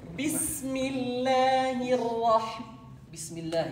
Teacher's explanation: Sakin, the first ra is sakin, and it has tikrar, repetition. And then the other ra tikrar, and it's maftuha.